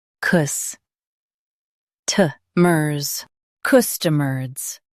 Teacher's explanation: Stress cus and soften t-mers.